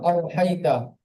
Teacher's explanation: অলিনকে নরম আওয়াজে তাড়াতাড়ি পড়তে হয়